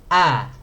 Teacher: hai jadi dia letaknya ada di tenggorokan bagian bawah ya heulang posisi makhorijul huruf hamzah terletak diposisi tenggorokan paling bawah